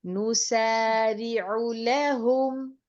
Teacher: یہاں پر عین کی پیش کو جلدی ادا کیا جائے گا کیونکہ یہ سبب مدہ کے بغیر موجود ہے